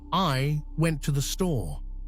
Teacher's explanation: the stressed syllables found in the words went and store create the rhythmic backbone of the phrase